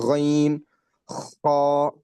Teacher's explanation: غین اور خا پروناؤنس from the top part of the throat, اوپر سے جہاں پورا چھوٹی زبان بولتے ہیں اپن جو ہے اس کے وہاں کے تھوڑا نیچے سے ادھر سے پروناؤنس کرنا غین خا.